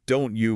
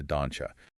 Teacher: A T plus a Y creates a sharp edge sound. So the phrase don't you morphs entirely into doncha.